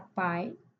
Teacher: a é a vogal pura e o i veio junto na mesma sílaba, então é semivogal